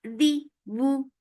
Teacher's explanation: The wu for dhamma circular lips. The lips should be nicely circled for dhamma and the sound is short.